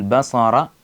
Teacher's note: സ്വാദ് ശബ്ദഗതി ഉയർത്തി ഉച്ചരിക്കേണ്ട അക്ഷരമാണ് ബസാറ എന്ന് അതുപോലെ റ ഉച്ചരിക്കുമ്പോൾ ശ്രദ്ധിക്കുക റ ഉച്ചരിക്കുമ്പോൾ റ എന്നാണ് പറയേണ്ടത്